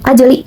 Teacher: Hukum tajwidnya yaitu qalqalah sugro, karena terdapat huruf jim atau huruf qalqalah yang barisan mati atau sukun dan dibaca dipantulkan seperti ini